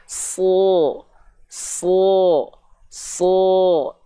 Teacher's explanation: huruf yang tebal itu ketika fathah dibaca seperti vokal O karena apa Karena tadi ya PLN pangkal lidah naik sudah kita